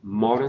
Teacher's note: the first o is open